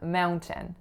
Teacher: So as you can hear in the American way, there's an N followed by a glottal stop, mount, and the Canadian way, the T is released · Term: release of T sounds